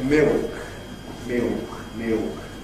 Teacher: what's happened in London (English) is that it’s lost the tongue tip articulation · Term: L Vocalization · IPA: [mɪok]